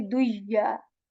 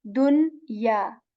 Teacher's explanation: rather than saying duya, we say dunya. We articulate the noon sakin here. We do not skip the sound, neither the nasal here.